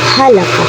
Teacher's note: Ha is pronounced through letting a gush of air through your vocal cord, or also called vocal fold, and it resembles the H or the Ha in English.